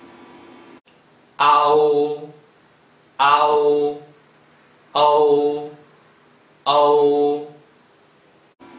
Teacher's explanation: these two symbols both end with the sound ooh